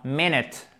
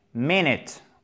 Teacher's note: Ça, c'est aussi un i court, même si évidemment, il est prononcé moins longuement et moins fortement, comme l'accent tonique se trouve sur la première syllabe. Donc, prononcez ces 2 voyelles en i court, ce qui nous donne donc minute.